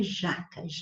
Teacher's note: jaca é paroxítono porque o já é a sílaba mais forte, a penúltima. Terminou em A, não tem acento.